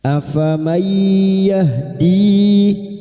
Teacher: nun sukun bertemu ya idgam biguna masuk ke huruf ya dan mendengung selama tiga harakat.